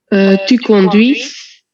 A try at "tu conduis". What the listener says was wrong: The last one is silent. The last letter is silent. Tu conduis, voilà.